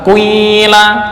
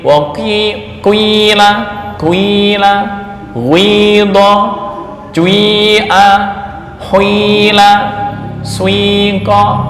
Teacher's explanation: mencampurkan harokat kasroh pada huruf pertama dengan dhammah, dengan cara membaca dhammah terlebih dahulu sepertiga, baru menyempurnakan membaca kasroh 2/3